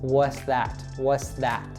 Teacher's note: we kind of lose that T sound altogether and it links to the next word, that. So it becomes what's that, what's that.